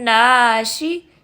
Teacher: شین زبان سے ادا ہوتا ہے، اور زبان کا کون سا حصہ؟ زبان کا درمیانہ حصہ، جس کو ہم وسط اللسان بھی کہتے ہیں۔